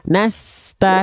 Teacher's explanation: Sin itu nama sifatnya rokhawah, mengalir suaranya.